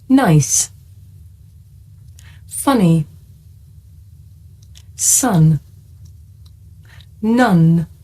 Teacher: when you make this sound you should be able to feel a vibration in your nose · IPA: /n/